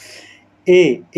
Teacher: ए का निर्माण आ और ई से हुआ है और आ का उच्चारण कंठ से ई का उच्चारण ताल से होता है इसलिए ए क्या होगा कंठ तालव्य होगा